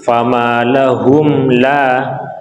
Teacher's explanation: ini ada mim sukun bertemu selain huruf mim dan ba, maka kita izharkan, kita jelaskan, kita putus, jangan sampai kita sambungkan atau dimasukkan